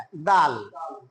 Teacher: ডাল বলতে হবে জিহ্বার আগা সামনের দুই দাঁতের আগার সঙ্গে লাগায়